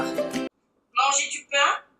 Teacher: garde la nasalisation dans les phrases « manger du pain »,« laisser tomber » et « buvez du vin »